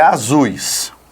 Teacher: Então, Quando você pensa na curva melódica que a sua voz faz, na pronúncia de ZUS, eu quero que você pense, eu tenho um som mais forte no U e mais fraco no I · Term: ditongo decrescente